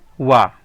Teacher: दंतोष्ठ यानी दांत और ओष्ठ से मिलकर जिसका उच्चारण होता है वो एक ही वर्ण है वा।